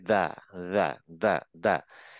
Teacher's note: জিবটা দাঁতের ঠিক শেষে মানে একদম গোড়াতে লাগবে এবং অনেকটা তা এর মতোই উচ্চারণ হবে